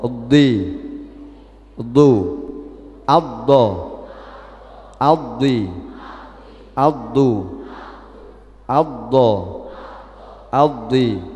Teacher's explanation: yakni memanjangkan suara dhot dari permulaan tepi lidah hingga penghabisan lidah, ya bersambung ke makhrajnya lam. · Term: Istitalah